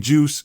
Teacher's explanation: starting with the tongue blocking airflow and then releasing it with a hiss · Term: africat